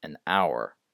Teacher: it's spelled with an H, but you don't pronounce it anyway. This one is interesting, though.